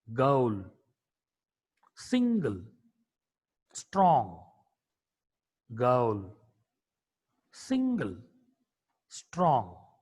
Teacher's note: G is a voiced velar plosive consonant.